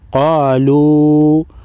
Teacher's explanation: واو مدہ اور اس کے بعد حروف مدہ کے بعد مد ہے، لیکن دوسرے کلمے میں اس کے بعد حمزہ ہے تو اس کو مد منفصل کہتے ہیں، چھوٹی مد ہے، 3 الف کے مقدار کھینچ کر پڑھیں گے۔